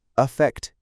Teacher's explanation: the first syllable in effect with an a is pronounced with a schwa sound